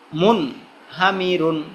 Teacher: মুন এই যে নুন সাকিন আসছে কিন্তু গুন্না হয় না